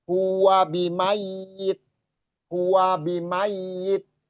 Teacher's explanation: jadi diperjelas saja bahwa ya-nya itu ada tasdid atau dobel